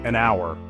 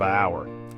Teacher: word hour for instance it starts with the letter H but the h is silent this silent h makes the word sound like it starts with ow which is a vowel sound because of this vowel sound we say an hour instead of